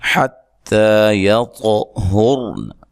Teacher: طا کو ہلا کر پڑھنا ہے, موٹا کر کے پڑھنا ہے